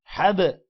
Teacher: حا، با زبر حب، قلقلہ کریں گے کیونکہ با کے اوپر جزم ہے، با حروف قلقلہ میں سے ہے۔